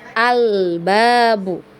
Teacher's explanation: hati-hati ketika mengucapkan huruf lam sukun ya, huruf lam sukun jangan sampai ada tawalut ya. Tawalut itu ada pantulan ya, pantulan, karena huruf lam ini bukanlah huruf yang dibaca memantul, atau dia tidak punya sifat qalqalah ya.